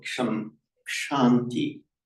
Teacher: So as you'd expect, the M becomes an N before the T. But interestingly, it lengthens its vowel,